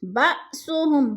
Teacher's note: با حمزہ ساکن ہے، جھٹکا دے کر پڑھیں گے۔